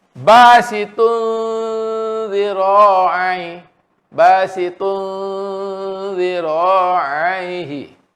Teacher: Sebab zal nipis, zal, zi dia. Jadi dengungnya secara istifal.